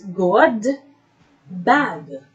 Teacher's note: bad these two sounds are amber velar to articulate the sounds it blocks airflow with the back of the tongue against the soft palate